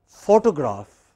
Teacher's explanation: photo say it after me or it can be photograph again in both cases you have a stress on the initial syllable